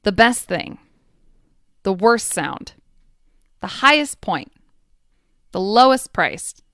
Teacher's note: Most superlatives have an at the end, but not all. And that final T will often disappear.